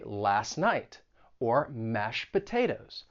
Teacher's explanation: you may not pronounce the T when it comes between two consonants. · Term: elision